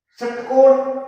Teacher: शहर, जीभ कहीं नहीं जाएगी, कंठ से आवाज आएगी। षटकोण, जीभ है मूर्धा यानी दांतों से ऊपर जो भाग है वहां लग करके और झटके से पीछे हो रही, तो वो स्थान है मूर्धा।